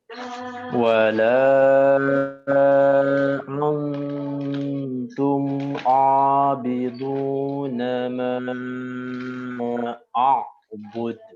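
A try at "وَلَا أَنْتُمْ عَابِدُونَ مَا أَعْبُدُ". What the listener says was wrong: Antum yang pertama dikasarkan lagi. Wala al ya, kasar dia.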